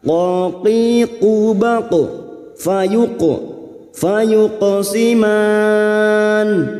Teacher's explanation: qaf sukun yang mati asli di tengah kalimat qalqalah sughra jangan lupa dipantulkan.